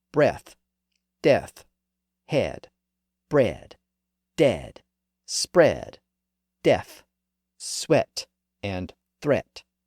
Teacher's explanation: Notice that all of those words are still spelled with ea, and notice that they all still have that eh sound, but the sound is pronounced short today. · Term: short e sound